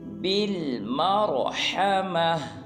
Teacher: را کو پر ادا کریں گے، اس کے بعد ہا اور میم کو لمبا نہیں کریں گے